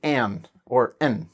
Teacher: it goes in the d position, but you don't release the d